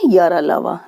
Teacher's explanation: क्योंकि इनके उच्चारण में, इनको बोलने में जिह्वा मुख के किसी भी भाग को स्पर्श नहीं करती है, इनको कहते हैं अंतस्थ व्यंजन।